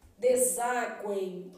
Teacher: O meu M tem som de I, formando um tritongo · Se eu quisesse aqui, ó, esse S tem som de Z